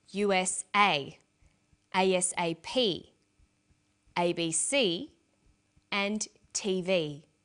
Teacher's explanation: cd-rom that's a compact disc with a read-only memory notice that each letter in the abbreviation is pronounced separately but the last letter is pronounced more strongly because it carries the primary stress